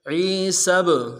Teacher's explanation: سین کو با کے ساتھ ملانا ہے، با حرف قلقلہ میں سے قلقلہ کریں گے